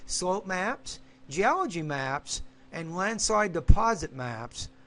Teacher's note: You got A, B, and C. So rising tone, then falling.